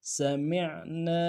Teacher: کی سیٹ باریک ہوگی، میم کو عین کے ساتھ ملانا ہے، عین کو گہرائی سے ادا کریں گے ، نون کے ساتھ الف مدہ ایک اعتدال میں کھینچیں گے،